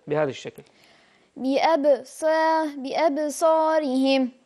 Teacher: هي صاد وفيها حكم التقليل، يعني الإمالة الصغرى، نبقى محافظين على صفاتها مع إمالتها. لا نقول صا بأب صا بأب صا، هاي الإمالة، واضح؟